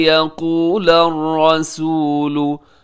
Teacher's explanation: رسول میں را موٹا پڑیے گا